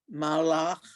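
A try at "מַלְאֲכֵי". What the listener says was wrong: That second to last word, malache. Yep, don't forget that vowel underneath.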